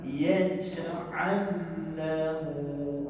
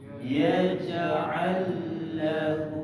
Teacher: Dia memasukkan huruf lam mati ke dalam huruf lam yang berbaris. Ini lam yang mati nombor 1, ini lam yang berbaris nombor 2 dia masukkan. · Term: idgham